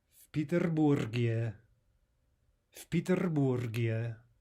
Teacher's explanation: We may notice already that v, right, that preposition meaning in, is devoiced.